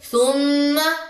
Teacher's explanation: next ہے جی میم کے اوپر تشدید ہے، اس پہ بھی آپ غنہ کریں گے